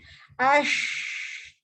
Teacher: Yang kedua shin. Shin ni adalah makhraj dia tengah lidah hampir dengan tengah lelangit. Tetapi tak melekat, dia hampir sahaja.